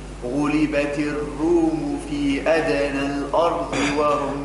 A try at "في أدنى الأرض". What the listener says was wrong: ما قولوش في أدنى الأرض. في أدنى الأرض شعمل في الهمزة فخمها. في أدنى الأرض الآ الرق الهمزة. في أدنى الأرض وهم.